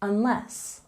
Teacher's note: We have a stress on the second syllable in unless.